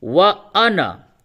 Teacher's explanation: اس کو اسی طریقے سے الف کے ساتھ لکھتے ہیں لیکن الف کے بغیر پڑھتے ہیں